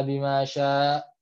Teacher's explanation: sya-nya itu kan sebenarnya mad wajib, tapi dibaca 2 harokat, boleh